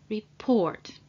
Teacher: what's important however that the stress is on the second part of the word the second syllable